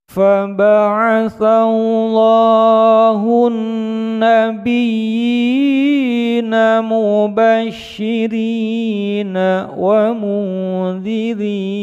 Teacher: Huruf ro yang berharokat kasroh dibaca tarkik atau tipis